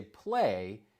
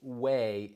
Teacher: It is possible that the child intended to say play but produced way instead which suggests a substitution of the initial consonant cluster pl with a single consonant W. This could be an example of a simplification process called cluster um reduction. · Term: cluster reduction